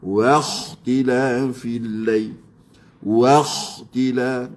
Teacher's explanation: kha dengan ghain makhraj yang sama sifat pun ada di situ. Sama jahar pun ada.